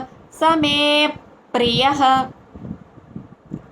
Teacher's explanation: విసర్గ ఉచ్చారణ ఫ కింద పలుకుతాం